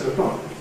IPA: ˈtʊəˈklɒk